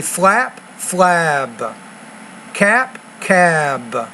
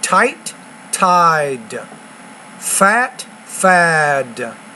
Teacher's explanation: The word that ends with the voiced consonant, the D, or the B, or the G, the vowel sound should be longer